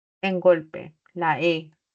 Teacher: la E está como vocal media y está de acuerdo a la posición horizontal como anterior.